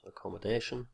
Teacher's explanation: What looks like a letter T is not pronounced T, but comes out as sh in accommodation.